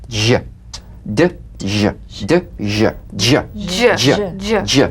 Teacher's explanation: place the tongue on the upper gum ridge for the D, D, then let the tip peel down for the ZH resonance